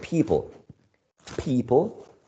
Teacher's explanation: people is stressed on the first syllable right people